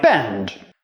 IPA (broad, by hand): bɛnd